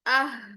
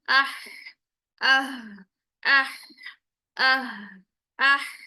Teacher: इसकी आवाज जो होती है ना, वो सीने में एक एक गूंज सी पैदा हो रही होती है, एक कह लें वाइब्रेट सा कर रहा होता है हमारे सीने की तरफ वाले जो हल्का हिस्सा है। · जब हम दूसरे हा को अदा करते हैं तो इसमें जो है वो ठंडी सांस वाली ही एफर्ट रहती है हमारी। ठीक है, इसमें हमारी सीने की तरफ वाइब्रेशन रहती है, लेकिन इसमें क्या होता है, हमारा ठंडी सांस वाली वो साउंड आ रही होती है। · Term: गोल हा